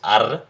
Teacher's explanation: We decided to use the alveolar trill, which is r